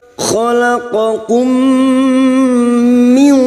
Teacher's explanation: Khalaqakum mim sukun bertemu mim idgham mimi memasukkan atau mentasdidkan 2 mim. Memasukkan bunyi mim sukun kepada mim berikutnya disertai mendengung selama 3 harakat.